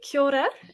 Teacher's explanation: it's sort of like a rolled R is how I'll describe the trick to pronouncing it